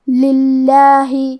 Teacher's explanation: کلمت للہ یہاں کیونکہ لام کے نیچے زیر ہے لہذا ہمیں لفظ الجلالہ کے لام کو پتلی آواز میں پڑھنا ہے.